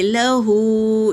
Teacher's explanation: کھڑا پیش ہے تو ایک الف کے مقدار کھینچیں گے